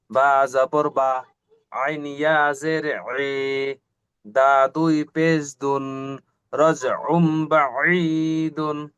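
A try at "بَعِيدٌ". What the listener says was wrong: মাশাল্লাহ, মাশাল্লাহ, খুব সুন্দর হয়েছে ভাই।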